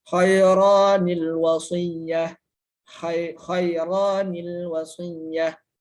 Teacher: Nun qiwayah ini adalah nun yang harus dibaca kasroh ketika tanwin bertemu dengan huruf dengan hamzah wasol